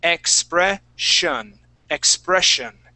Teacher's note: here in the middle of the word with the uh with the double s we're going to pronounce that as a sh sound